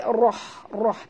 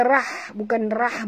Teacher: bukan rah bunyi dia, tapi roh, roh tebal ya